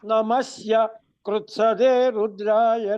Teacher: నమస్య అంటున్నారు, పైకి ఉదాత్తం వెళ్తున్నది.